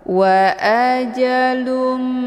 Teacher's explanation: harokat tanwinnya dimasukkan ke dalam huruf mim dengan cara ditekan kemudian ditahan lebih kurang 2 kali ketukan. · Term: idgham bi ghunnah